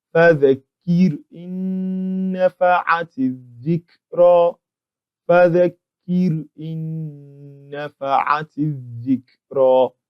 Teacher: we have a Nuun Sakinah being entered into another noon